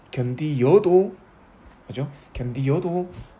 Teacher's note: 디귿은 지금 견디에다 역시 어가 붙었는데 그냥 견디어도 되지만 이렇게 견디여도 그죠? 견디여도 표준 발음으로 인정한 데서 견디여는 반모음 이가 추가된 거죠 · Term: 반모음 이 첨가